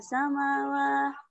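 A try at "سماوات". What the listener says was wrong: Oh, jadi samawah terus kenapa? Kan huruf ta di situ. Samawat. Panjang aja.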